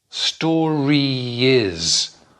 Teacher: you can link those two together with a little ye sound